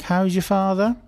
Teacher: we sometimes ask questions by dropping any kind of grammatical constructions for questions and we just raise the intonation